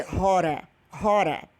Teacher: Significa quente. Aí, quando você muda lá que coloca R, a pronúncia do T fica R